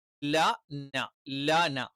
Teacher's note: ല എന്ന് ഉച്ചരിക്കുന്നതിന്റെ തൊട്ടുഫ്രണ്ടിൽ ആയിട്ട് എന്ത് ചെയ്യും ന എന്നുള്ള ഉച്ചാരണം വരും നാവിന്റെ അറ്റം അത് മോണയുടെ തൊട്ടുപിന്നിൽ അഥവാ മുൻപല്ലിന്റെ മോണയുടെ പിൻഭാഗത്ത് വെച്ചിട്ടാണ് നമ്മൾ എന്ത് ചെയ്യുന്നത് ന ഉച്ചരിക്കുന്നത്